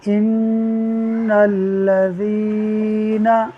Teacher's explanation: نون مشدد ہے، غنہ ہوگا، ایک الف کے برابر ناک میں آواز کو لے جا کر پڑھیں گے